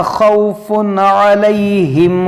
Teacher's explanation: یہاں پر آپ غور کریں تنوین ہے، اور تنوین کے بعد یہاں پر عین حرف حلقی ہے، تو یہاں پر ہم اظہار کریں گے، یعنی یہاں پر ہم غنہ نہیں کریں گے